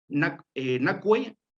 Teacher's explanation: el acento se marca en nacue, en el prefijo futuro na